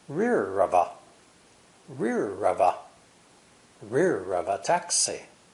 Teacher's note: The other words are unstressed, spoken lightly and quickly. The 3 words rear of a are linked together.